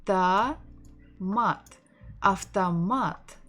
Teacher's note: stressing the final syllable